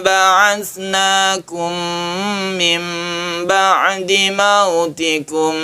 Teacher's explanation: Yang jelas ini iklab karena suara nun mati menjadi m atau mim.